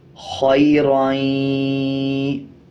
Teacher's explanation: اسی طرح دو زبر دو زیر یا دو پیش کے بعد یا شد والا آ جائے یا واو شد والا آ جائے تب غنہ کر کے پڑھا جائے گا، غننے کی آواز کو ناک سے نکالا جائے گا